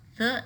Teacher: the tip of tongue touches the bottom edge of the top teeth or between the teeth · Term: dental